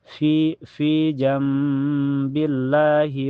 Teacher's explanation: Jambillah billah setelahnya lafaz Allah dibaca tarqik ya baca tipis karena sebelumnya berharakat di bawah kasrah